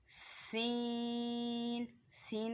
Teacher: ये सीटी वाला है, ये ज़बान की नोक और दोनों दांतों के अंदरूनी किनारे से अदा होगा। सीन, हमारी जो ज़बान की नोक है वो नीचे वाले दांतों की जड़ में जाके अंदरूनी किनारे में जाके टच हो रही है।